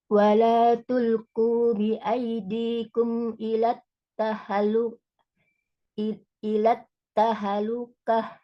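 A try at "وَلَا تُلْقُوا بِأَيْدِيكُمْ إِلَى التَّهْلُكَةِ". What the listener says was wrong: Sukun Mi, hanya ilat tahlukah.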